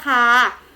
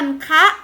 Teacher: เป็นอักษรต่ำเหมือนกันแต่เป็นคำตายมีสระเสียงสั้นนะคะพื้นเสียงเป็นเสียงวรรณยุกต์ตรีนั่นเองค่ะ